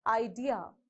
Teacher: the correct way of pronunciation idea is you have to stress on the second syllable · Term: word stress